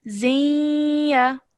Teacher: this would be idgham naqis rule, where nasal sound is formed between joining these two letters together